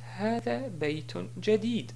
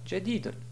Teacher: Si on s'arrête sur la phrase, on dit hada baytun jadid et non pas jadidun.